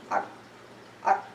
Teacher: And the way to avoid the Takrir, which means the rolling of the sound or the tongue multiple times, is by pressing the tip of your tongue against the roof of your mouth or against the hard palate, and rolling the tongue only one time